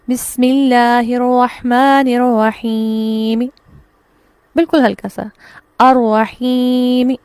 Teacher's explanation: ٹھیک ہے، الرحیم جب ہم پڑھیں گے تو یہاں پر میم پر زیر ہے. اب یہاں میم کی زیر کو ٹوٹل جزم کے ساتھ ختم نہیں کیا جائے گا بلکہ اس کو ہلکا سا پڑھ دیا جائے گا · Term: وقف بالروم